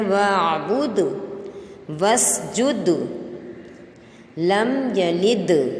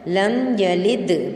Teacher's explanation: واسجد، لم یلد، ٹھیک ہے، دال آ رہا ہے آخر میں، یلد میں تو جھٹکا دیں دال کے اوپر